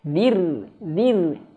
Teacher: Ra-nya tebal jangan tapi zir, zir. Tipiskan.